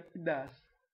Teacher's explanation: houve a retirada da vogal átona para se pronunciar apenas a tônica